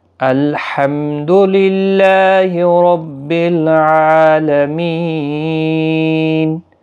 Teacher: لام ساکن کو ہلانا نہیں، ہا کا خاص خیال رکھیں، یہاں پر دو چشمی ہا نہ نکل جائے